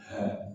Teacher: Kemudian ha dari pangkal tenggorokan.